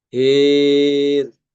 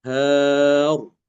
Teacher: karena imalah otomatis rnya itu tidak dibaca tebal ya tidak dibaca tafkhim tapi dibaca tipis Hir bukan her ya.